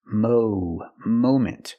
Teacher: we cannot use a short a sound like hot and stop and Mom we need the long o sound like no and go and phone